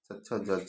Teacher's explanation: चवर्ग का उच्चारण स्थान तालु हो जाएगा